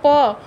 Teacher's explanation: प आप बोलेंगे तो आपके दोनों होंठ जो हैं वो सटेंगे, ओष्ठ से माना जाता है, इसलिए दोनों ओष्ठ हमारे सटते हैं, दोनों होंठ हमारे सटते हैं, इसीलिए प वर्ग का उच्चारण स्थान होंठ को माना जाता है।